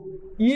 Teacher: ఇ అనగానే చ అనగానే శ అనగానే టక్కనవి మనకి తాళవ్యములుగా ధ్వనిస్తాయి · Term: తాలవ్యాలు